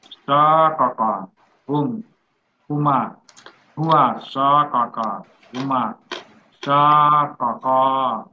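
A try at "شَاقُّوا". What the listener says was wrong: Syaka, langsung aja digabung Pak. Ya, langsung gabung. Syaka, syaka.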